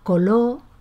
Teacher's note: Si es debilitamiento o pérdida, se pronuncia coló en lugar de color